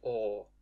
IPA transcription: ɔ